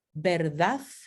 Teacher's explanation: Podemos tener la consonante interdental fricativa sorda th, como verdad. Esto en el centro y norte de España.